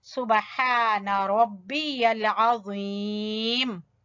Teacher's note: ہا کو وسط حلق سے، حلق کے درمیان والے حصے سے